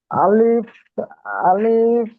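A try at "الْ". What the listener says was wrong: এটা আলিফ পড়ছেন কেন? আলিফের উপরে জাবার জের পেশ যখন যুক্ত হবে, তখন কি হবে? আলিফ আর আলিফ থাকবে না, হামজা হয়ে যাবে, পড়েন। হামজা লাম জাবার আল।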